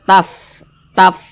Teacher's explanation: Taf Taf gitu tu ada nafas yang mengalir Jangan dibaca tap tap git jangan tapi dibaca Taf begitu a